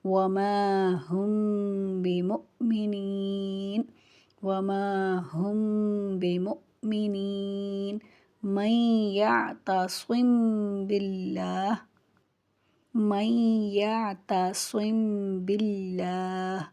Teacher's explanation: اس اخفا کو اخفائے شفوی کہتے ہیں۔ میم ساکن کے بعد جب با آ جائے تو اخفا کریں گے، آواز ناک میں جائے گی، غنہ نہیں کریں گے،